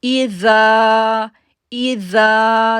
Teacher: زال کو ہم نرمی کے ساتھ پڑھیں گے اور کھینچیں گے 2 سیکنڈ کے لیے کیونکہ الف سے پہلے زبر ہے